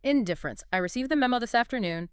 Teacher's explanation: Very low, flat pitch all the way through. You'd rush through the little words and the end would almost be a mumble. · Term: total boredom